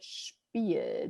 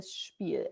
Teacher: the German way to pronounce that, you have a much fuller mouth, right? You have the sh situation. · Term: sh sound